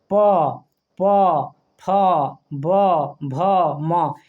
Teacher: प फ ब भ म ये पूरा का उच्चारण स्थान क्या हो जाएगा होठ हो जाएगा · पवर्ग बोलिएगा तो प, ओठ देखिएगा सटेगा